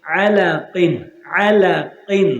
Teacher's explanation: غنہ نہیں ہوگا، آگے حروف حلقی کا عین آ رہا ہے